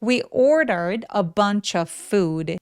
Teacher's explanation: food 할 때 입술 쭉 우 소리.